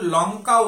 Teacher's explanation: তাহলে লঙ্কার ক্ষেত্রে ল যখন উচ্চারিত হচ্ছে বা উচ্চারণ করছি এই ল উচ্চারণ করার সময় আমাদের জিহভা দন্ত মূলে কিন্তু স্পর্শ করছে। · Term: লঙ্কার ল